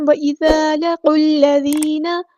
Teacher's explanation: زان ہم نے باریک نرمی سے ادا کرنا ہے